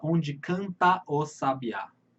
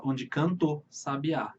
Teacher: por conta do ritmo, da sua respiração, você não fala onde canta o sabiá. Você fala onde canto sabiá.